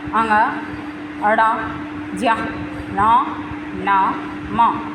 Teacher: नासिक्य व्यंजन जिनका उच्चारण मुख और नासिका से होता है